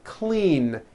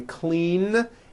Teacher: Clean ends with a voiced N.